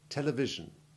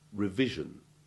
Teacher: be careful not to let the sound become the zed sound of televise and revise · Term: soft s3 sound